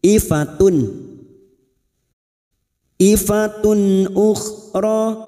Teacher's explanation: atau tanwin yang bertemu dengan enam huruf ini termasuk Hamza maka dumat tanwin dibaca jelas tanpa mendengung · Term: Idhar halq